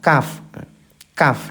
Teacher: Nah, kalau kaf ini di depannya, sedikit ke depan, yaitu pangkal lidah atau lidah bagian belakang bertemu dengan langit-langit keras